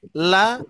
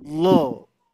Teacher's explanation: ketika huruf lam ini di lafad Allah atau di lafdul zalalah ya. Nah, ini. Yang asalnya la menjadi lo